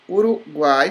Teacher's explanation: o U é fraco, ele logo é semivogal, o A é a mais forte, ele é uma vogal, e o I, que também é fraco, ele vai ser uma semivogal